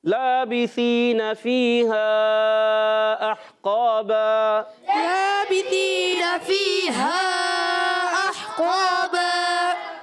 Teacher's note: دو زبر کی تنوین کو الف سے بدل لیں گے